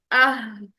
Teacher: तो हमने हा साकिन में देखा कि आवाज और सांस दोनों जारी रहते हैं, ठीक है। पहले हमने इसकी रिक्वायरमेंट को पूरा किया, हा साकिन की रिक्वायरमेंट को पूरा किया, उसके बाद हमने जबर, जबर वाला हा अदा कर दिया, हा, आहा, आहा।